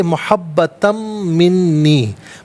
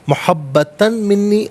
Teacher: दो ज़बर की तनवीन को मिन की मीम के साथ मिलाएंगे, मीम की आवाज़ को गुन्ने के साथ अदा किया जाएगा। इसे मुहब्बतम मिन्नी, मुहब्बतन मिन्नी गलत है, मुहब्बतम मिन्नी मीम की आवाज़ गुन्ने के साथ अदा होगी।